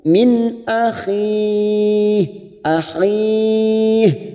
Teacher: Min nun sukun bertemu hamzah, kita baca jelas tanpa mendengung